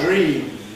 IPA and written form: dɹ̝iːm (dream)